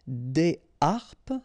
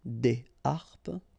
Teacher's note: so you don't make the liaison between the two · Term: H aspiré